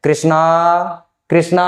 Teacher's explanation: जो अंतिम में आ है उस स्वर को हमने थोड़ा लंबा उच्चारण किया, इसलिए इसे प्लुत स्वर कहा जाता है।